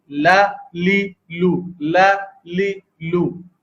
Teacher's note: زبان کا سرا جو ہے وہ اوپر کے دانتوں اوپر کے جو مسوڑے ہیں، اوپر کے سامنے کے جو دانت ہیں اس کے مسوڑوں پر لگنے سے یہ حرف ادا ہوتا ہے. جیسے کہ آپ دیکھ رہے ہیں کہ ثنایا، رباعی، انیاب اور ضواحک، ان کے جو مسوڑے ہیں اس پہ لگتی ہے. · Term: لام